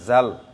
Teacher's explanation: জালটা হলো কোথার থেকে আসে বলে জিহ্বার অগ্রভাগ, সানাউলিয়া দাঁতেরও অগ্রভাগ, জিহ্বার অগ্রভাগ, সানাউলিয়া দাঁতেরও, সানাউলিয়া মানে হলো ওই যে উপরের মাড়ির উপরের যে দুইটা দাঁত বড় বড় সামনের, ওই দাঁতকে বলা হয় সানাউলিয়া। তো জালের মখরজটা হলো জিহ্বার অগ্রভাগ, সানাউলিয়া দাঁতেরও অগ্রভাগ, এই জায়গা থেকে জাল উচ্চারিত হয়, জাল যেটা জা নয়, জাল।